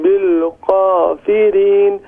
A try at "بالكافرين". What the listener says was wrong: بالکافرین. کاف کو باریک پڑھیں، ایمٹی ماؤتھ، بالکافرین.